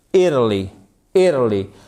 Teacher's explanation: le te, puisqu'il est compressé entre deux voyelles, il va devenir ce qu'on appelle un flap T.